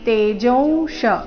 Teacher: ತೇಜೋ ನಂತರ ಬಂದಿರೋ ಅನುಸ್ವಾರದ ಉಚ್ಚಾರಣೆ ನಾಸಿಕಾಂ ರೀತಿ